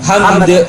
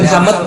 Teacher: Tapi karena kita berhenti, maka dalnya disukun.